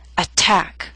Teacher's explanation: attack is a word with two syllables stress is on the second